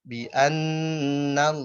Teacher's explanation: Bi annallaha yaro. Nah, lo-nya tebal, h-nya tipis, ya-nya tipis, ro-nya tebal.